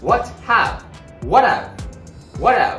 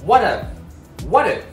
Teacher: 。▁have▁you、シーンの▁V▁と母音の▁Y▁をつなげて▁view、▁view、▁have▁you、▁have▁you。▁3つ目のリンキングはちょっとだけ例外的、これは▁H▁の発音に関わってくるリンキングです。▁H▁の発音はちょっと弱くて、あの息をハッハッって出してるだけだからちょっと弱いんですよ。だから実は前に▁H▁が来る時も実はリンキングが起こるんです。ここで見られるのは▁What▁have、▁What▁have、▁T▁のシーンと▁H▁の発音がなくなって▁A▁の母音、これが合わさって▁What▁have、▁What▁have、▁What▁have。▁そして最後は、濁る▁T▁がまた発生してます、H▁の発音がないから一番最初の母音が▁A▁になります。▁ What▁の最後の▁T▁は▁A▁と▁A▁の母音にまた囲まれてます。ですからここでまた濁る▁T▁をします。